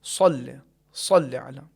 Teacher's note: بعض افراد اس کے تلفظ میں واو یا پیش جیسی کیفیت لاتے ہیں، صل صحیح نہیں ہے، واو کا تلفظ یا پیش کی آواز نہیں آنی چاہیے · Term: حرف صاد